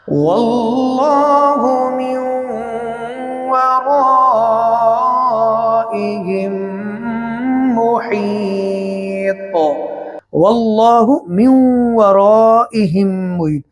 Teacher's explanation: یہ میم ساکن ہے، اس کے بعد یہ میم مشدد ہے، تو لہٰذا میم ساکن کو میم مشدد کے اندر ملائیں گے، ادغام شفوی اسی کا نام ہے، اس کو کہتے ہیں من ورائہم محیط۔